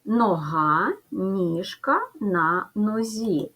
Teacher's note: Чергуються звуки г, ж, зь.